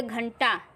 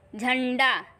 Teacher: अनुस्वार को जब हम बोलते हैं अन्न की बिंदी को, तो आवाज़ निकलती है सिर्फ नाक से